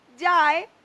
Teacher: হয়ে গেছে যা এ এই আ এখানে এ তে পরিণত হয়েছে যায় আই এর সঙ্গে এ এখানে একীভূত হয়ে গেছে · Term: অর্ধস্বরধ্বনি